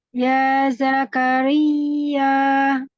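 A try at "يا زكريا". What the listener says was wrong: Jangan ditahan, tapi lebih neken ke atas. Lidahnya lebih naik.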